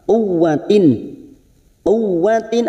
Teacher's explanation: Ta marbutah di sini yang berharakat kasratain yang bertemu dengan Ain Idhar halq dibaca jelas tanpa mendengung setiap nun sukun atau tanwin yang bertemu dengan enam huruf ini